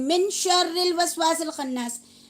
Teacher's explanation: یہاں پہ من نہیں پڑھا جائے گا کیونکہ شین ہمارا حروف اخفاء آ گیا